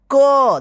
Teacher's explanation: इस क में दो अक्षरों का उच्चारण हो रहा है इस पहला आधा क फिर अ का साउंड आ रहा है तब जाकर यह उच्चारण हो रहा है पूरा क अगर अ